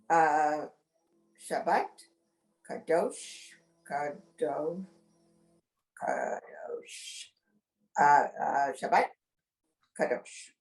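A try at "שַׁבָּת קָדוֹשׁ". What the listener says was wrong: Perfect.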